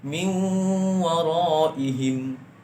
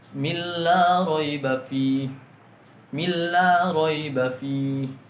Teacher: Nah, nun mati bertemu dengan waw, cara membacanya ialah didengungkan. Didengungkan agak sekitar 2 harokat. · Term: idgham bi gunnah